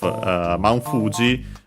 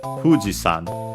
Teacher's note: Fuji is accented on the first syllable, and yeah, it stays like that. So Fuji-san, high, and everything else low.